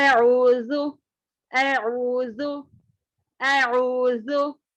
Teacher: दोनों दांतों के दरमियान थोड़ी जुबान बाहर आने पर इसका मखरज अदा होता है